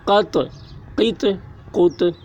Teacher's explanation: طا حروف قلقلہ میں سے ہے اور اس پر جزم ہے، اس لیے طا میں قلقلہ ہوگا۔